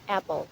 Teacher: Short vowel sounds articulated in front of vocal tract and the tongue in half opened of the mouth and lip is spread.